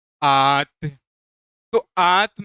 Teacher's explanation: जब आंत का हम उच्चारण कर रहे हैं तो मुख से सांस अधिक निकल रही है। जैसे आप अगर नाक बंद करके भी करेंगे तो आ आप जब इसका उच्चारण करेंगे तो आपको फिर भी समझ आएगा।